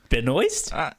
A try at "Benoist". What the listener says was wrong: No, without the last T. Benoist. At least that's how she pronounces it.